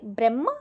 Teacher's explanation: బ్రహ్మలో హ కి మకారం ఉంది మనం ఆ ఒత్తుని ఫస్ట్ పలకాలి తర్వాత హని పలకాలి బ్రహ్మ హ మాని మా ని ఫస్ట్ చదివాక తర్వాత హ ని చదవాలి